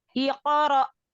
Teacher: hamzah kan makhorijul hurufnya dari tenggorokan bagian bawah sama dengan hak besar